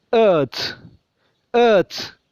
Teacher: ഏ നമ്മുടെ തൊണ്ടയുടെ അടിഭാഗത്ത് നിന്ന് വരുന്നൊരു ശബ്ദം